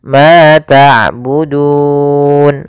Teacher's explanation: Mad yang muncul karena wakaf dan disebabkan karena adanya sebelum huruf yang diwakafkan dan disukunkan ada huruf mad, yaitu berupa huruf waw. Maka panjangnya du di sini boleh 2 harokat, boleh 4 harokat, boleh 6 harokat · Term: mad arid disukun